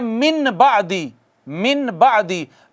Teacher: نون ساکن یا نون تنوین کے بعد حرف اقلاب با آ جائے تو نون ساکن یا نون تنوین کو چھوٹی میم سے بدل دیں گے